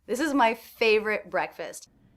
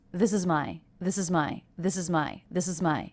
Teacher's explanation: so this string of three unstressed words this is my this is my this is my this is my very fast and very connected